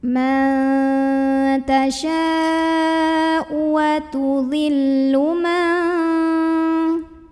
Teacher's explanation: Mad tabi'inya adalah alif, sebelumnya fathah, hamzahnya yang pada kata tasya'u. Maka shinnya dipanjangkan, boleh 4, boleh 5 harokat. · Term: mad wajib muttasil